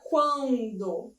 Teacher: a representação do A, que é a vogal, é muito mais intensa da chamada semivogal. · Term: crescente